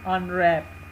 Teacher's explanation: तो अनरैप में के टू पार्ट्स हैं तो हम रैप के ऊपर जो है वो स्ट्रेस देते हैं